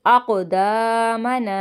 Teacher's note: قاف میں آواز پلٹ کر آئے گی